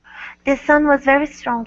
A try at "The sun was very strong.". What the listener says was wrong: Let's go to very instead of Betty. Betty strong. Okay, give me a good R. Very, very strong.